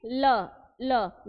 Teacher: जो हवा है वो जीभ के बगल से निकल जाए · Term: पार्श्विक व्यंजन